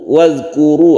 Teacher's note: Wadhkuru ada ro yang berdoma, kita sebut dengan bacaan ro tafkhim karena dia doma, maka dibaca tebal ro-nya, zalnya tidak qalqalah.